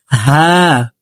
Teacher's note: স্বাভাবিকভাবে হাফের উচ্চারণ করতে হবে। হা এই হাটি হলকের মধ্যখান থেকে উচ্চারণ করব।